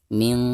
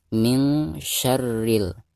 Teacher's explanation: Di sini huruf shin ya. Nah, maka cara membaca nun sukun di sini itu harus disamarkan atau harus didengungkan ya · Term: ikhfa